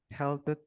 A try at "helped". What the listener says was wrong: helpnya jangan jangan kedengaran P ya help help